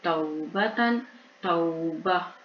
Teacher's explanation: یہاں پہ جب ہم وقف کریں گے تو تا کے 2 زبر بھی گر جائیں گے اور تا کے نقطے بھی گر جائیں گے اور ہا کی آواز آئے گی